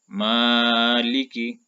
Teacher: اور جب آپ اس کو پڑھتے ہیں جیسے کہ مالکی، تو آپ غور کریں کہ جب میں نے اس کو پڑھا تو میں نے میم کی آواز کو کھینچا اور لام اور کاف کی آواز کو میں نے نہیں کھینچا، تو یہ الف مدہ ہی ہے جس کی وجہ سے ہم میم کی آواز کو کھینچتے ہیں۔